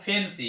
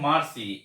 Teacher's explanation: তারপরে দেখো সিলিন্ডার, এই সিলিন্ডার শব্দে সি কনসোনেন্টের পরে ওয়াই ভাওয়েলটি আছে এবং এই শব্দে সি এর উচ্চারণ শয়ের মতো হয়েছে। এই সি কনসোনেন্টের পরে দেখো ওয়াই সেমি ভাওয়েলটি আছে, এই জন্য এই শব্দেও সি এর উচ্চারণ শয়ের মতো হয়েছে।